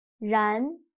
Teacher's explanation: But in Chinese, when pronouncing 然, your mouth is not round at all. It's a little bit stretched. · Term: initial R